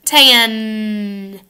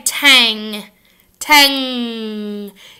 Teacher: your tongue goes up in the back